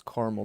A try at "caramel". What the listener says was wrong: There's no such thing. There's no such thing. It's caramel. It's the second A.